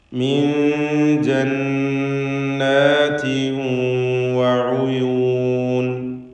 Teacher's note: തൻവീനും ശേഷം വാവും. ഇദ്ഗാം ബിഗുന്ന നാഖിസ് നൽകി തൻവീനിനെ വാവിലേക്ക് ലയിപ്പിച്ച് മണിക്കുക.